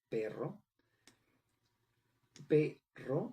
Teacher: recae en la segunda sílaba, ro, porque en ella recae la entonación más fuerte. A las sílabas que se pronuncian con menor intensidad se le llaman sílabas átomas.